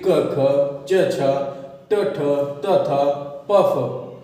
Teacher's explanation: अघोष व्यंजन है प्रत्येक वर्ग का प्रथम और द्वितीय व्यंजन